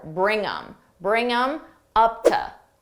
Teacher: I can reduce the them just get rid of that th and I'm left with M and I have to add it to the word before